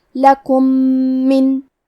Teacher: یہاں حکم ہے ادغام متماثلین صغیر، مطلب ہم میم ساکن کو دوسرے میم میں ملا کے ایک ہی میم غنہ اور تشدید کے ساتھ پڑھیں گے